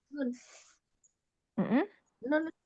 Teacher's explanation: Nun adalah ujung lidah bertemu dengan gusi atas.